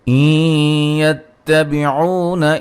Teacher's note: نون ساکن کا ادغام مع الغنہ ہے · نون مشدد پہ غنہ ہے، الف مدہ ہے. نون ساکن کا اخفا ہے، قاف کو موٹا، دال پہ قلقلہ، جیم پہ مد واجب ہے.